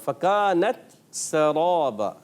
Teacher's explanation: سین کو بھی باریک رکھنا ہے, را کو پر کرنا ہے